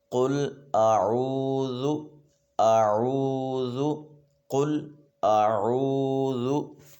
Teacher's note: جو حضرات تجوید و قرأت سے ناواقف ہوتے ہیں وہ اکثر اس لفظ کو قل اعوذ اس طرح سے پڑھ دیتے ہیں، تو یہ غلط ہے۔ حمزہ کو اور عین کو ایک تو علیحدہ کر کے پڑھنا ہے، دوسرا عین کو تھوڑا سا کھینچ کے پڑھنا ہے۔